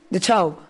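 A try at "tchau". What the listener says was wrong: Se escribe te chao, pero se pronuncia chao.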